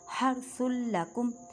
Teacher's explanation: تنوین کے بعد لام، لام حروف یرملون، ادغام بلا گنہ کریں مینس کے گنہ نہیں کرنا